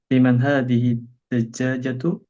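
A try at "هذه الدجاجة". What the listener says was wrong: Langsung ke tasydidnya hadhid dajjajatu.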